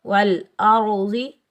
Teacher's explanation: حمزہ کو ہم را ساکن کے ساتھ ملائیں گے، را کو ہم پر پڑھیں گے، موٹا پڑھیں گے